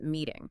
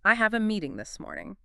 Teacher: when a T is trapped between two vowel sounds, the tongue just lightly taps the roof of the mouth. It softens into something that sounds almost like a quick D. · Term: soft D sound